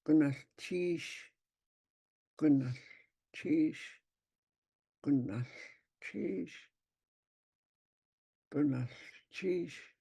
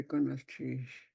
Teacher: Your voice goes up on the cheese. If it didn't have a tone mark, it would be goodness, cheese, just monotone.